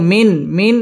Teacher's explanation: এটা হচ্ছে ইজহার স্পষ্ট করে পড়তে হবে গুন্না ছাড়া